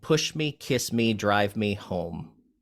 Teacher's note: Your stressed syllables are push, kiss, drive, and home.